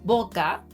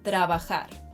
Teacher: when these letters appear in the middle of a word, our lips barely touch each other and the sound is softer